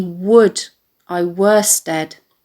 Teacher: And the second and third feet can either be read as a trochee, dum-dee, and a spondy, dum-dum, with a stress on the words would and were